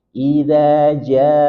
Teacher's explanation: maka mat wajib muttasil dibaca 4 sampai 5 harokat